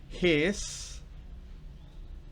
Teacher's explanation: es una z, fuerte, vibrada, es sonora. No es la S típica nuestra, que la S nuestra es sorda. En este caso, en his, es una S sonora que parece una Z.